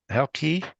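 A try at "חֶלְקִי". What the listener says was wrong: You pronounced everything just fine. Accent the last syllable.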